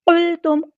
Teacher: قاف ہمارا heavy letter ہے، پورا ادا کریں گے، لام ساکن کو ہلانا نہیں ہے،